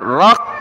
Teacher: فی، را کو قاف کے ساتھ ملا ہے، قاف کو میم کے ساتھ، قاف کو سخت کریں گے تشدید کی وجہ سے